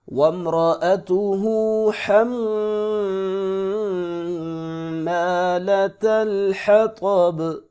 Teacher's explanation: طا کو موٹا پڑھیں گے، حا کو حلق سے پڑھیں گے، میم پہ غنہ ہوگا، را کو پر کر کے پڑھیں گے۔ یہاں یہ جو میم ہے وم، تو یہاں پر غنہ نہیں کریں گے بلکہ وامرأته، اور نہ ہی یہاں پہ قلقلہ ہونے دیں گے۔ · وقف کی صورت میں با ساکن ہوگی، قلقلہ بھی کریں گے